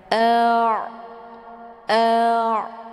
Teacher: tawud itu pertengahantara ditekan dan ditahan jadi dialirkan setengah a ya Bunyi Ain ini lunak karena dia posisinya di tenggorokan bagian tengah